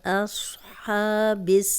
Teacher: فی اصحاب یہاں پہ صاد موٹا ہے اور حمزہ کو موٹا نہیں کرنا ہے، ایسے نہیں پڑھنا، اصحاب، ہا کی کلیئر آواز آنی چاہیے، حلق سے نکالیں